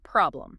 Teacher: >> The O sound is that short open O again like in hot. And the final M sound is crucial. You need to actually close your lips and hum it. >> If your lips don't close, the M gets lost.